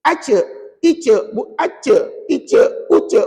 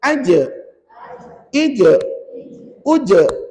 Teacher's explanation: tengah lidah kamu ni angkat dan tekan ke langit-langit. Baru bunyi jim.